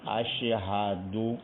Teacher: ہا کی آواز جو ہے چھپ رہی ہے، تو ہا کی آواز بھی ظاہر ہونی چاہیے۔